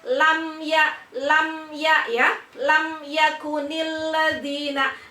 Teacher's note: Jadi dari bibirnya yang masih tertutup merapat kemudian langsung ke ya. Jangan dibuka dulu baru ke ya. Karena kalau dibuka dulu baru melafalkan huruf ya, Anda berpotensi mimnya ini memantul. · idhar syafawi karena mim sukun bertemu dengan ya, maka mim dibaca jelas